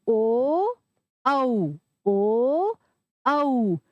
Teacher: इनका उच्चारण कैसे होगा होठों की और कंठ की सहायता से तो इनको क्या कहा जाता है कंठ उष्म ठीक है आगे